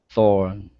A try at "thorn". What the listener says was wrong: Don't be lazy on the N. Thorn.